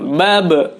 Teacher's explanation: harus dipantulkan karena ba merupakan huruf qalqalah. Ketika berharokat sukun maka dipantulkan.